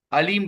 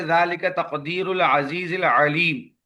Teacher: عین کے ساتھ ہے، لیکن انہوں نے حمزہ کے ساتھ پڑھ دیا